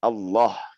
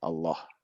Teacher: pada saat pembacaan ini lam di sini ditebalkan ya.